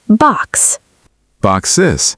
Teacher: Box already ends in a hissing sound, so adding just S would be hard to say clearly.